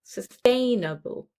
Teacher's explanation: Again, it's 4 syllables, sustainable. And where is the stress? In the second syllable, sustainable.